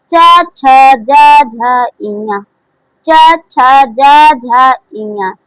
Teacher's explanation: चा का उच्चारण स्थान तालु से होता है।